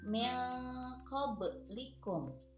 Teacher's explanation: Huruf ba dibacanya memantul. Kenapa? Karena ba di sini adalah huruf dari qalqalah. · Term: qalqalah sugro